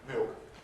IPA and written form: mɪok (milk)